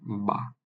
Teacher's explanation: দুই ঠোঁটের যে ভেজা অংশ ওটা যুক্ত হয়ে এই বা লেটারটি উচ্চারিত হবে